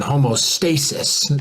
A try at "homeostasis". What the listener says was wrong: It's homeostasis, man. You said homostasis. You said homostasis, man.